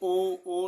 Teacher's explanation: मतलब हमारे होठ भी चल रहे हैं और कंठ से आवाज भी आ रही है। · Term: कंठोष्ठ स्वर